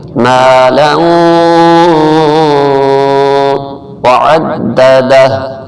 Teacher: واو شد پر ہمیشہ گننا ہوتا ہے، واو مشدد پر، تو یہاں تھوڑی دیر ناک سے آواز نکالیں گے۔